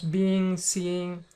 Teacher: I tend to drop the G and then connect the N with the vowel